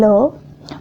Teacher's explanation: is only one lateral that is low when this is articulated there is closure in the center of oral passage and the air escapes on one or both sides